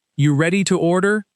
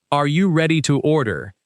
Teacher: in fast, casual speech, native speakers often drop the word are.